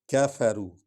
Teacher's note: کاف کو نرم پڑھیں گے اور باریک پڑھیں گے